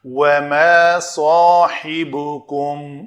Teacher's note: وَمَا صَاحِبُكُمْ، صاد کو پر کریں گے، صاحبکم، سین پتلا رکھیں گے تو سین بن جائے گا۔ سین اور صاد مخرج ایک ہی ہے، زا سین صاد، سین پتلا ہوتا ہے اور صاد موٹا